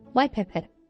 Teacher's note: alveolar stops T did become bilabial